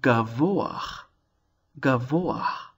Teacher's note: we have a bit of a glide between the cholam vav, o, into the hey. Oach.